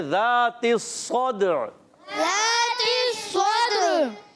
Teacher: صاد کی ادائیگی صاد کو پر رکھیں گے, دال میں قلقلہ کریں گے, عین کی ادائیگی کلیئر کریں گے